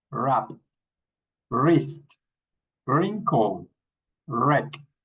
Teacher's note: we don't pronounce the W. We start with the R.